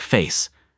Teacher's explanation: If we rewind to classic RP, it's all about that neat clipped face, almost like face with a clear two-part vowel.